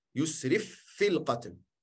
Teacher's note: Dus je spreekt niet uit als twee keer een fa, maar als één fa.